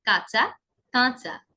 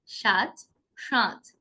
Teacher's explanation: কাঁচা শব্দটিতে চন্দ্রবিন্দু আছে, তাই আমরা খানিকটা নাকি স্বরে উচ্চারণ করছি।